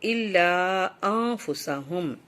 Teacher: نون کو ہم اس لیے یہ اخفا کر رہے ہیں کہ اس کے بعد اخفا کا الفاظ فا آ رہا ہے